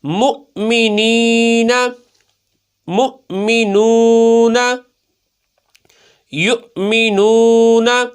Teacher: میم حمزہ پیش، جھٹکا لگانا ہے، حمزہ ساکنہ آ گیا نا